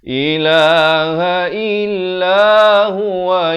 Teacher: Kemudian la ilah, la itu dibaca 4 atau 5 harakat. Dia panggil mat ta'zim di sini.